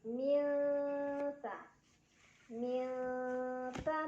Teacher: Minha milta, ada ikhfa awsat karena ada nun sukun yang bertemu dengan huruf ta. Cara baca nun sukunnya samar-samar ke huruf ta sambil dengung. Jadi nggak baca min jelas ya, melainkan sudah mau bilang ta.